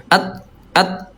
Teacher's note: huruf ta sama dia syiddah, dia kuatnya Bunda suaranya tertahan kalau sukun